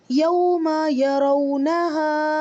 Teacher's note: یہ واو لین آ گیا ہے آپ کا، واو ساکن سے پہلے زبر ہے، جلدی پڑھیں گے